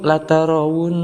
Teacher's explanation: ada huruf nun yang bertasydid, maka kita hukumi sebagai ghunnah musyaddadah